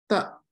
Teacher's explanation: that's when your tongue is basically just behind your teeth, and that's called dental.